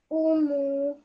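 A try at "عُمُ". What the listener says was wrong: Your sounds are correct, but you just stretch the mu out for too long, okay? This meme has a simple dhamma on it. So does the ayn, okay?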